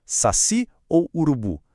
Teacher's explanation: São oxítonas. A última sílaba é forte, mas como não terminam com essas letrinhas mágicas, ficam sem acento.